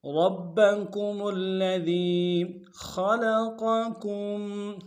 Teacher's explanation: خا کو موٹا ادا کریں گے، قوف کو موٹا ادا کریں گے، کاف کو میم ساکن کے ساتھ ملانا ہے، غنہ کریں گے، آگے تشدید ہے، تصحیح کے ساتھ ملائیں گے میم ساکن کو۔